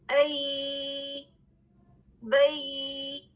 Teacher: یا کی آواز میں بھی رخاوا پایا جاتا ہے، یعنی آواز میں کنٹینیوٹی ہے